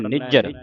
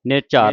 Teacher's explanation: ਕੱਸ ਕੇ ਬੋਲਣਾ ਭੋਲਾ ਨਹੀਂ ਉਚਾਰਨ ਕਰਨਾ ਅਧਿਕ ਲਾ ਕੇ ਪੜਨਾ